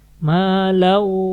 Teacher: Lau di sini tanwin ketemu waw, masukin ke waw dan ditahan. Ya, ini idgham bigunnah berarti ya.